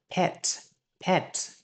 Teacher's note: âm P Bật hơi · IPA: /pet/